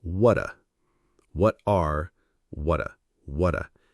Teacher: What are squeezed together to sound like what a